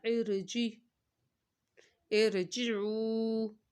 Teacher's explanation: یہ عارضی زیر ہے، یہ خود لگائی گئی ہے اس وجہ سے را کو موٹا ہی پڑھا جائے گا